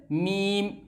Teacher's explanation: फिर है दोस्तों मीम, दोनों लबों की खुश्की यानी दोनों होंठ और इसके खुश्की का हिस्सा जो सूखा हुआ है